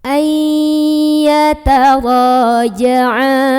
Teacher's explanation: ra mad tabi'i karena ada alif sebelumnya fathah, dibaca panjang ra-nya 2 harokat saja.